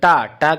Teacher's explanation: तो ट हम लोग का जो निकलेगा यहां पे वो हो जाएगा मुर्धा से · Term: ट वर्ग